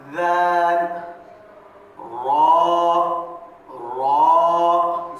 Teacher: जबान की नोक और ऊपर के दांतो का किनारा लगने से